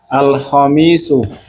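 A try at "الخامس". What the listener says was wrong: sebentar kayaknya panjang pendeknya antum agak kurang tepat.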